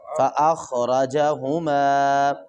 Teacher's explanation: خا کو موٹا کریں گے اور را کو بھی موٹا کر کے پڑھیں گے